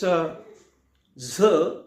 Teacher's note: When we pronounce this Z, then the vocal cords are vibrated, means they get vibrated or they vibrate. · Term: voiced sound